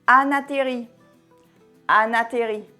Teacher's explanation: Le son N à la fin de Anne rejoint la voyelle A.